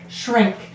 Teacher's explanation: you'll notice your tongue doesn't go all the way forward when you say shrink